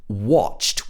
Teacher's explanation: if this was in a british accent it would be pronounced watched with the o sound